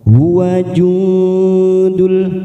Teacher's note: nun sukun bertemu dal ikfa hakiki, kita semarkan bunyi nun sukun 3 ketuk